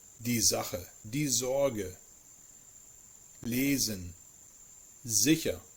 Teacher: The most complicated is actually the letter S. It is pronounced like a voiced sibilant, the Z sound, if it is followed by a vowel.